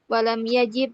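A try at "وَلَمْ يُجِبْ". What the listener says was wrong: walam yujib. Ulang itu salah. Bukan yajib, tapi yujib. Ajaba yujibu. Yujib. Kalau wajaba yajibu nanti maknanya kacau. Kalau walam yajib tidak mewajibkan atau tidak wajib. Tapi kalau yujib, yujibu, ajaba yujibu, ini maknanya adalah tidak menjawab.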